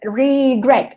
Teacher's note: el acento, la fuerza la tiene en la última sílaba